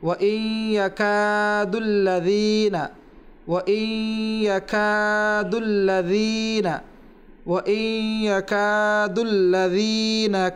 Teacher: ওয়া ইন ইয়াকাদুল্লাযীনা, ইয়ার পরে ওয়া ইন ইয়াকা কাফ রয়েছে, আর কাফের পরে এক আলিফ রয়েছে মদের হরফ, সেখানে এক আলিফ টান দিতে হবে